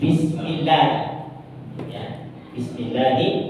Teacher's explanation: Lafaz Allah itu kalau sebelumnya fathah maka tebal, kalau sebelumnya kasroh di Bismillah maka tipis.